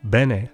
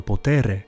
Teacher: bene has a short e, while potere has a long e.